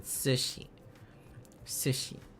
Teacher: it's a U but unrounded